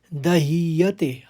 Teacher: दूसरे चरण को देखिए, इसमें त्यक चैव फिर परिदह्यते, ह और य मिले हुए हैं, दह्यते, ह निकलेगा पहले, फिर यते आप कर देंगे उसको